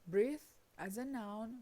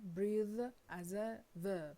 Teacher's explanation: the noun ends in a voiceless fricative s or th, while the verb in a voiced fricative th or z